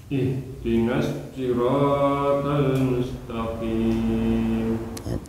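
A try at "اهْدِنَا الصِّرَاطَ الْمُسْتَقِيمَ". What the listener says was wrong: Gak usah putus-putus. Ihdinas, jangan ihdinas sirat, jangan bukan. Ihdinas, langsung nyambung.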